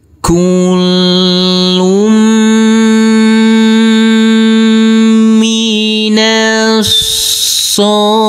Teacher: Huruf nun kita baca pendek, langsung masuk ke huruf shad yang bertasydid ini. Huruf shad kita tekan, kita tahan saja dan kita baca panjang dengan panjang 2 harokat. Huruf ha boleh kita baca panjang dengan 2, 4 maupun 6 harokat. · Huruf lam ini karena bertasydid maka harus kita tekan dan kita tahan saja. Kita tahan dengan 2 harokat dan berdomah tanwin yang bertemu dengan huruf mim, maka tanwinnya kita leburkan dan kita rubah menjadi dhammah. · Huruf mim kita tekan, kita tahan serta kita dengungkan. karena ini adalah bacaan idgham bi gunnah.